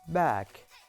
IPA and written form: bæk (back)